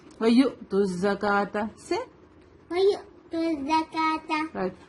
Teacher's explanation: واو نہیں پڑھیں گے اس کو, ہم حمزہ کی ساؤنڈ آئے گی, جرکنگ ساؤنڈ آئے گی